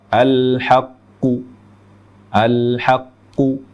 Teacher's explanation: bunyi Qalqalah cenderung ke harakat damah